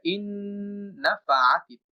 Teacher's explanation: আমরা দ্বিতীয় উদাহরণে যদি দেখি, নুন এটা ইন্নাফাআতি, প্রথম নুনটা দ্বিতীয় নুনের সাথে যুক্ত হবে, তখন আমরা সরাসরি হামজা দ্বারা দ্বিতীয় নুনটাকে উচ্চারণ করব।